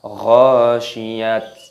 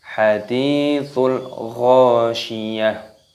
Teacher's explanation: Di sini ada tak marbutah, maka di sini dimatikan. Tak marbutah itu ketika waqaf berhenti dimatikan, maka berubah menjadi huruf H. Makanya kita baca bukan ghasyiyat, bukan, tetapi hadithul ghasyiyah.